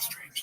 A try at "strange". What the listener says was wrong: Like strain. It's a strain thing.